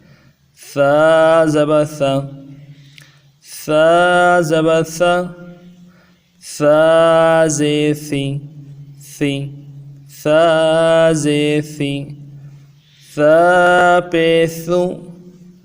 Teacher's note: اس کو زا نہ بنایا جائے، اس کو اسی ترتیب سے نرمی کے ساتھ پڑھا جائے